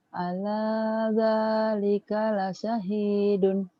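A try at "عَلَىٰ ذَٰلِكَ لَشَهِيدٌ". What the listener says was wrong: Bagus, tapi shinnya belum keluar tuh Kak. Ala dzalika shin la syahidun.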